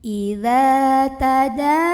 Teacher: Kemudian di sini ada ikhfa aqrab. Karena ada nun sukun yang ketemu sama huruf ta. Maka nun sukunnya ini dibunyikan samar-samar.